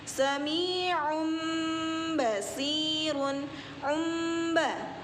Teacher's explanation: basyirun Embah ada hukum bacaan Ikok label sebabnya tanwin bertemu ba untuk bacaannya dibaca dengung ya dengungnya itu bibir rapat atau mingkem